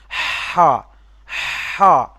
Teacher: এই যে বড় হা, যেখানে এই যে বা হা, এইদিকে দেখেন, বইয়ের দিকে দেখতে পাবেন, বা হা যে এই যে আছে, এটা হলো বড় হা। এটা কিন্তু কণ্ঠনালীর মাঝখান হতে হা উচ্চারিত হবে